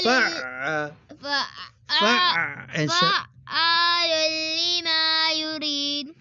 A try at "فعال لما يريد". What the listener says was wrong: दाल पर कलकला नहीं करते युरीद